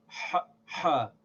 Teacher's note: When we pronounce this, there has to be pressure in the throat. The throat has to get constricted so that we get that hard H sound. We press the throat a little bit.